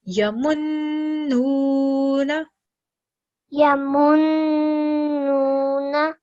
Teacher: letter noon with the shadda letter, it is noon hunna. So we're going to prolong the noon sound for 2 seconds as well. Yamun, followed by wow madda.